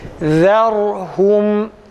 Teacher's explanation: Zal ince, ra kalın arkadaşlar. İnceden kalına geçince harfleri karıştırmamak lazım.